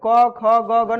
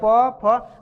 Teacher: क ख ग घ नहीं सट रहा है होठ, लेकिन प फ बोलेंगे तो होठ सट रहा है।